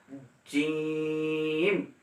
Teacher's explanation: জিহ্বার মধ্যভাগ তার বরাবর উপরে তালুর সঙ্গে লাগাই দিবেন এবং কঠিন করে আদায় করবেন। জিম একটু শক্ত হবে, জিম, নরমভাবে আদায় করবেন না।